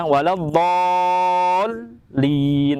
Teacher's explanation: Di sini kita dihadapkan pada huruf yang tebal dan huruf yang tipis. Huruf dha itu berkarakter hurufnya tebal atau tafkhim, sedangkan huruf lam itu tipis ya atau tarkik ya. Maka membacanya pun huruf lam tidak tertarik dengan huruf dha ya, waladdallin, tapi waladdallin, tidak waladdallin.